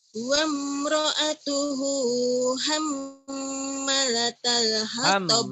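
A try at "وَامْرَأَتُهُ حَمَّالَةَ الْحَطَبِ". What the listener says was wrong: Hamma, panjang ada amatnya. Wa imra'atuhu hamma.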